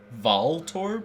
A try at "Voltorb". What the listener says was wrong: Yeah, Voltorb. We're saying the same thing. No, you're using a short O and I'm using a long O. Like, I'm using like a...